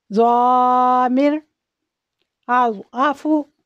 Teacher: ضاد، اس کو سختی سے پڑھتے ہیں اور موٹا پڑھتے ہیں